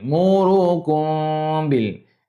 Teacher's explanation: kena ingat dia jumpa dengan huruf ba. Dengung dua harakat ni. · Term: ikhfa syafawi